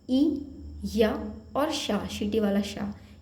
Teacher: चा वर्ग के अलावा ई, या और शा, शीटी वाला शा, ये तीनों, इनका उच्चारण स्थान भी तालु होता है